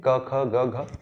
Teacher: तो कंठ पे जोर पड़ता है, वहां पर आपका कंठ की भित्तियां जो है आपस में टच होते रहती हैं, तो इनको हम कहते हैं कंठ्य।